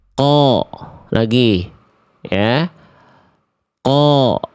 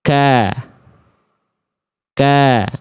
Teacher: Ada yang kalau qaf pangkal lidahnya tetap naik. Kalau kaf dia turun.